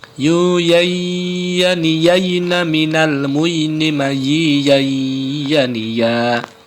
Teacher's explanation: lidah bagian tengah dengan langit-langit yang lurus di atasnya